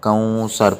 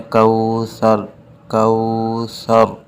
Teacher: ناک میں آواز نہیں جانی چاہیے